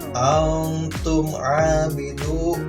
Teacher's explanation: Setelah mim sukun menghadapi yang namanya ain, itu dibacanya izhar syafawi, bukan ikhfa safawi ya. Izhar harus jelas terdengar suara mimnya. Antum abidu, tidak dengung ya, tapi jelas.